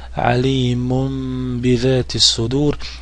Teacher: dio tenvina je pretvoren u mim, što ukazuje na to da se uklapa ovaj drugi dio tenvina u harf ba, pa će se pročitati kao m